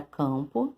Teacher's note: E para finalizar, nós temos um outro dígrafo que é um pouquinho diferente, nós havíamos falado sobre ele na sala de aula também, que é o AM ou AN. É um dígrafo acompanhado de uma vogal e uma consoante, e que na hora da fala, esse som sai meio que pelo nariz